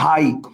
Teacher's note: এই যে আ আর রস্বই, এই দুইটা মিলে নতুন একটা স্বর তৈরি হয়েছে না, যেটার নাম কি আই। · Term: যৌগিক স্বর